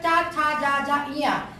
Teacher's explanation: फिर है दूसरा चा छा जा जा इया। देखिए, जीभ हमारी तालू से लग रही है, इसलिए इन वर्णों को हम कहते हैं तालव्य